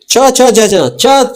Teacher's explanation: ಈ ನಾಲಿಗೆಯ ಮಧ್ಯಭಾಗ, ಈ ನಾಲಿಗೆ ಮಧ್ಯಭಾಗ ಇರ್ತಲ್ಲ, ನಾಲಿಗೆ ಮಧ್ಯಭಾಗ ಬಾಯಿಯ ಮಧ್ಯಭಾಗಕ್ಕೆ ಹೋಗಿ ಬಡಿತಾ ಇರ್ತದೆ.